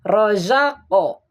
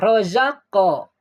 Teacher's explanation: Kan disukun, tapi seperti ada harokat gitu karena qalqalahnya.